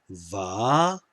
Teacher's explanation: the kamats hey represents a long ah sound